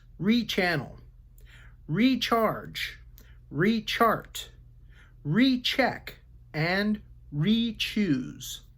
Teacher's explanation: by an R if it has an R before it then it sounds like the long e e followed by a CH sound